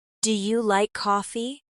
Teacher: Again, the pitch rises slightly.